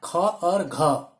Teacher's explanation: कहने का क्या मतलब है कि जिन व्यंजनों के उच्चारण में हमें अधिक समय लगाना पड़ता है या बोलने में अधिक समय लगता है वो महाप्राण व्यंजन कहलाते हैं। इसमें क्या है कि श्वास वायु अधिक मात्रा में मुख से बाहर तेज गति से आती है, तो ऐसे व्यंजन को हम महाप्राण व्यंजन कहते हैं।